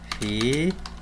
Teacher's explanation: Vejam que a sílaba tônica não é a última nem a penúltima, ela é a antepenúltima. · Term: proparoxítona